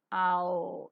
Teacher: The lips are neutral in the beginning and later they get slightly rounded.